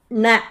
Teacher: மூணு சுழி ந சொல்லும்போது நாவோட நுனிப்பகுதி வந்து மேல் அன்னத்தோட நடுப்பகுதியை வந்து தொடணும்